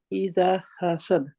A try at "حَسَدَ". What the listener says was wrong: حسد دال کا کلکلا ہونا چاہیے. یہ سارے ہی باریک لیٹر ہیں, ترقیق کے ہیں, ہم کہتے ہیں باریک.